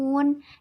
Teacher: Di sini terdapat bacaan mad arid li sukun karena mad bertemu dengan sukun karena waqaf dibaca panjang 1 sampai 3 alif